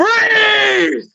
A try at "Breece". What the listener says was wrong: No, you're not holding the ease part of it.